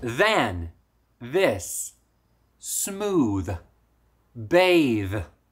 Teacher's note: One thing that you have to remember with this hard TH sound is that you should be able to hold the sound for a long time.